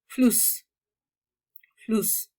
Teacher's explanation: la forma doble S, que no es seguridad social, se vocaliza como una S cualquiera. Eso sí, provoca que la vocal anterior sea corta